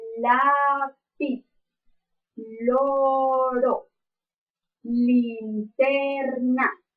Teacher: este fonema según su modo de articulación eh se clasifica como lateral en su punto de articulación es alveolar porque como dijimos con